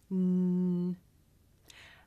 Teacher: we make this sound with the tongue behind the teeth. N. And when you make this sound, you should be able to feel a vibration in your nose.